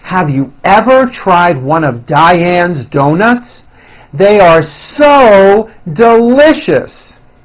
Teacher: Now, in American English, words that carry the highest informational value in a sentence are given more emphasis with increased loudness, a higher pitch, and sometimes a longer duration. Listen to my intonation and notice how I slowly step up and then I work my way down again.